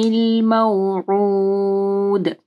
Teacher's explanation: دال کے اوپر کلکلا کرنا ہے